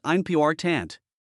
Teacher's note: A word like important has the second syllable stressed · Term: word stress